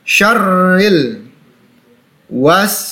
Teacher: Ro berharokat tasydid, ditekan. Syarril wa berhadapan dengan alif sukun, maka dipanjangkan 2 harokat.